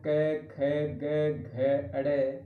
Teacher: कंठ से डायरेक्ट मुख विवर से आवाज या ध्वनि बाहर निकलती है तो इसको कंठे व्यंजन कहते हैं।